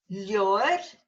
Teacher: Your BH has disappeared, but it's still in the spelling.